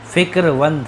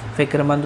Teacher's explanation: میم جو ہے وہاں واو میں بدل جاتا ہے